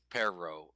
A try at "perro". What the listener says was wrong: you don't use enough air. You don't use enough air when you sing, and you don't use enough air to roll your R's. fixable. That is easy to fix.